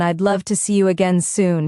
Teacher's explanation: The stress is on love and soon.